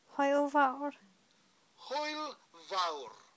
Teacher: Remember to roll those R's at the end of that word, fawr.